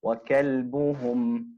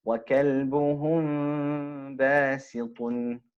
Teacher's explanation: So there you're completing the articulation point of the meme. Now with the ikhfa shafawi, we're not reciting the meme in full, it's merging into the next